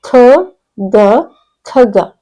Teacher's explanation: ನಾನು ಉಚ್ಚಾರ ಮಾಡೋದನ್ನ ಗಮನಿಸಿ ಕಗ ಅಂತ ಹೇಳ್ತಾ ಇಲ್ಲ ನಾನು ಖಗ ಖಗ ಇದು ಮಹಾಪ್ರಾಣಾಕ್ಷರ